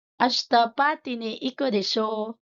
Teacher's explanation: When the speaker expects that the listener has some knowledge on the topic being discussed and that the listener will agree with the speaker's view, desho is said with a rising intonation to confirm the listener's agreement